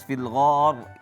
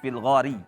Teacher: fil gar ketika berhenti itu harus tebal. Kalau kalau lanjut memang tipis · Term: tebalkan rnya